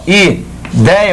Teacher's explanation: Ideia, olha a sílaba tônica, é o ditongo. E a base do ditongo é a vogal, é de timbre aberto.